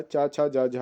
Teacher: स्पर्श संघर्षी जो होता है चा छा जा झा होता है